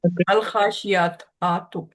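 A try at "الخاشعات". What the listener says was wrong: عین پہ ہم کھڑی زبر نہیں لگائیں گے. الخاشیاتی. الخاشیاتو.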